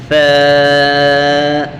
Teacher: اس کو پڑھتے ہوئے سامنے والے 2 دانتوں پر زبان لگائیں گے